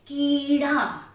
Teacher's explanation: अगर मैं दीर्घ ई बोलती हूँ कीड़ा, तो कीड़ा को मैंने क में ई को ज्यादा जोर देकर लंबा देकर बोला है, इसलिए यहां दीर्घ ई की मात्रा होगी।